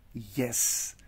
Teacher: by place of articulation, it is palatal. By manner, it is approximant. And by voicing, it is a voiced one.